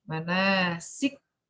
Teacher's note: Kaf pertamanya hilang. Yang ada yang bunyi kaf kedua tasydid.